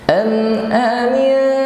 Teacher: Mim sukun di sini tidak kita baca dengan berdengung, tapi juga tidak boleh terlalu cepat.